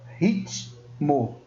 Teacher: Se eu pego aqui a palavra ritmo, ó, ritmo, eu faço a pronúncia do rit, completo com o T, e depois eu vou para uma próxima pronúncia, mo. mas a junção dos encontros, eles não permanecem na mesma sílaba.